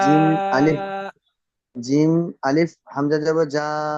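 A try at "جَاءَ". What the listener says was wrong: না, হামজা নয়, মাদ, উপরে যে চিহ্নটা মাদ বলা হয়, মিম আলিফ দাল, মিম, মিম ময়াকার দ, মাদ, বাংলায় থেকে। জিম আলিফ মাদ জাবার যা। হামজা জাবার আ,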